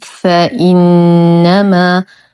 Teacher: نشد النون بغنة أكمل ما تكون